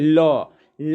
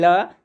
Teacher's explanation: जीभ की नोक के दोनों तरफ से यानी पार्श्वों से हवा निकलने के कारण इन ध्वनियों को बोला जाता है, इसलिए इसे पार्श्विक ध्वनि कहते हैं।